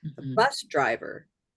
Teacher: when you're compounding, it's that the second part drops down very low.